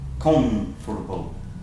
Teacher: That M will actually start sounding like an N. And actually that T sound, I shouldn't even put that in there, because that T sound almost disappears.